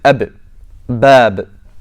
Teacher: So ba is a letter of qalqala. So it's when your lips have a strong closing.